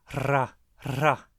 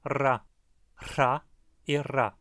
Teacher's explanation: No começo das palavras ela costuma ser pronunciada com mais intensidade, com aspiração ou sem voz, como se seguida por um H